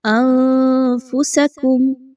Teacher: نون ساکن کے بعد فا، نون کی آواز کو مخفی کیا اخفا کا قاعدہ فالو کرتے ہوئے